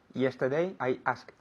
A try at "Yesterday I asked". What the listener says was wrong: Very good. I asked con una T.